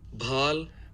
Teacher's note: In the voiced aspirated stop, we get voicing all the way through the release of the stop. It begins before it's released and it continues through it.